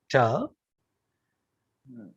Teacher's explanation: alveolar ridge is a place of articulation which gives us sounds like ta in English, and that's an oral sound